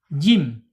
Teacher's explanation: Makhrajnya ada di al-lisan, yaitu punggung lidah yang tengah ya terangkat ya. Jim itu terangkat tapi bukan istilah ya, bukan terangkat keseluruhan ya, beda.